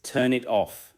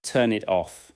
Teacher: The final consonants connect forward to the following vowel sounds. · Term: consonant to vowel linking